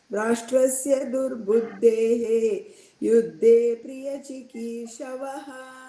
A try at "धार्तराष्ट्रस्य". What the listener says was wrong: Don't say धार्त्र, it is धार्त. धार्तराष्ट्रस्य दुर्बुद्धेः। धृतराष्ट्रः तस्य पुत्रः धार्तराष्ट्रः।